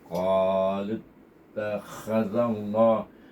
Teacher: Ini zal baris alif, maka kita baca dengan idgham syamsi dan dibaca tebal dua harakat